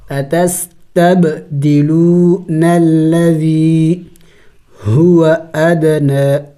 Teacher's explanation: قلقلہ کریں گے، دال حروف قلقلہ میں سے ہیں